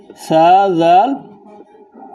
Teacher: সা, জাল, এরপর জা, এই তিনটি হরফের মাখরাজ হলো এক। কেননা জিহ্বার আগা সামনের উপরে দুই দাঁতের আগার সঙ্গে লাগিয়ে সা, জাল, জা এই তিনটি হরফ উচ্চারিত হয়। অতএব দাল বলার পর জাল যখন বলবেন তখন জিহ্বার আগা সামনের যে উপরে দুইটি দাঁত আছে সেই দুই দাঁতের আগার সঙ্গে লাগাবেন, হালকাভাবে লাগাবেন।